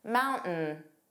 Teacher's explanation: This is called a glottal stop, which is a brief pause in your vocal cords. It's not a D sound, it's not moundin, it's not a D, and it's not dropped altogether.